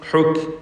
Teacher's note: ഹുക്ക് ഹുക്ക് എന്ന ശബ്ദം കേൾപ്പിക്കരുത്, ഖൽഖല വരരുത്. ഹുക്ക് മൗവ, തൻവീനും ശേഷം വാവും മുമ്പും വന്നതാണ്, ആവർത്തിച്ചു വരുന്നു.